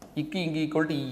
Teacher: நாவின் அடி அண்ணத்தின் அடி